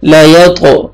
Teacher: ग़ैन को मोटा करके पढ़ना है और खींचना है, ग़ैन को खड़ा ज़बर है।